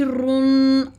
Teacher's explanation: را میں زبان کے نوک اوپر دانتوں کے مسوڑوں کے ساتھ لگتی ہے اور پیچھے پشت کی جانب مڑتی ہے